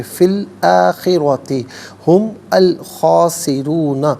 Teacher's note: آخرۃ میں را پر زبر ہے، را کو پر کر کے پڑھیں گے، فی الآخرۃ ہم الخاسرون، ملا کر پڑھنے کی صورت میں میم پر پیش ہوگا، اس پیش کو الخاسرون کے لام ساکن کے ساتھ ملائیں گے اور درمیان میں سے الف نی حمزہ کو حذف کریں گے۔ · خاسرون میں را پر پیش ہے، را کو پر کر کے پڑھیں گے۔